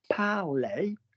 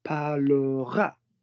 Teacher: So your er is normally silent. Parler, P-A-R-L-E-R, it's silent.